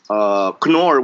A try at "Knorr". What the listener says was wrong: it's pronounced Conor, not Nor. So Conor is German. Conor.